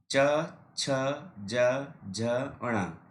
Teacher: तालु का मतलब हमारे मुख में ऊपर का जो भाग होता है उसको तालु बोलते हैं, तो इसका नाम हो गया तालवे। उच्चारण स्थान तालु है और नाम क्या है इसका, तालवे।